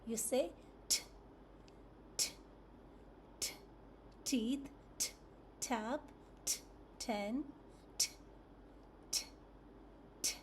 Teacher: So the mouth is slightly open. The tongue touches the alveolar ridge.